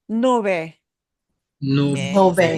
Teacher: that B in the middle will be very soft